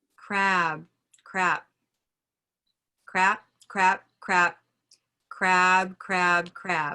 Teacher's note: Same vowel color, but the time on the vowel is going to influence the way the listener hears it.